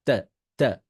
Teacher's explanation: এইটা হচ্ছে ওই যে বার্গার, দুটো মনে করবেন আপনার জিহবাটা হচ্ছে একটা মাংস, বার্গারের উপরের দাঁত আর নিচের দাঁতটা হচ্ছে আপনার বার্গারের উপরে দুইটা রুটি। তো জিহবাটাকে কামড় দিতে হয় আগে, আর জিহবাটা বাহির করে রাখতে হয়। এইবার তার ত সাউন্ডটা করতে হয়, ত, ত।